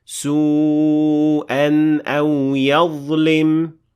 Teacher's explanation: when we linked this word to what comes after it, the alif disappeared and we pronounced the tanween normally